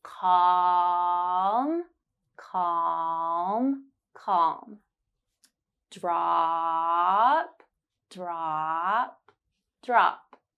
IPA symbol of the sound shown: ɑ: